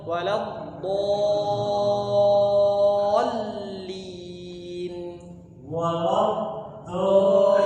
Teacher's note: Mad lazim kalimi mutsaqqal 6 harakat